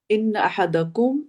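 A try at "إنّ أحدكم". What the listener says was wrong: इन्ना, इन्ना, इन नहीं है, ठीक है, इन्ना अब दोबारा पढ़ा आपने, दुरुस्त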